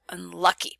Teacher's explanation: save up our energy for the stress in the middle so we use a wedge in the middle syllable and the first syllable is reduced down to schwa